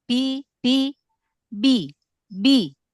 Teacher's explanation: bi pakai yang bibir bagian dalam